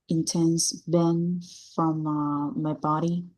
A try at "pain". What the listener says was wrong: That is not pain. Pain. Pain. Cái chữ A á, pain là cái từ mà nó có chữ A ở giữa, phải đọc chữ A nha. Pain và đánh N lên thôi. Pain. Sẽ nghe là giống như pen giống như cái bút đó là sai.